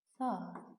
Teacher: oradakı saitlərdən biri düşür, digəri uzanır. Saat olacaq saat.